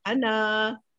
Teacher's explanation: Ana tu kalau kita berhenti, kita ada 2 harakat.